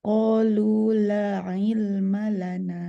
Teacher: Panjangnya 2 harakat aja, nggak boleh melebihi 2 harakat, nggak boleh 4, nggak boleh 5. Jadi dia nggak jadi mad jaiz dia.